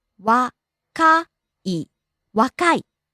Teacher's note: rising on the second syllable Ka and falling on the last syllable E.